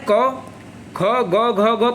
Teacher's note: कंठ है उच्चारण स्थान घ का